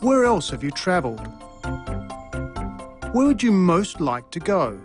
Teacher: the pitch of his voice fell at the end of both questions